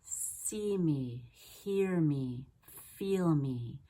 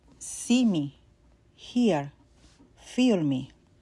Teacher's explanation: the lips are more spread in English and more neutral for the long E in Spanish.